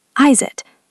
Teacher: is ends with a zed sound. It starts with a vowel. So we link is it. So far we have how is it?